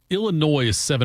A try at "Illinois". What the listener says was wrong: Did you just throw an S on the end of that?